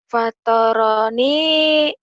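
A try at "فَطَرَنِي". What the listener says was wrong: Foto bukan patah ya. To bunyi O huruf Jawa. Fotoroni.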